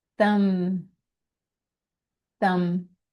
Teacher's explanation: the B is silent. So it just ends with an M sound.